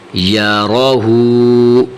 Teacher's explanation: یہاں جو الٹا پیش ہوتا ہے، جو عام پیش ہوتا ہے نا، اس سے تھوڑا سا زیادہ کھینچنا ہے، ٹھیک ہے. مد سے کم، پیش سے زیادہ.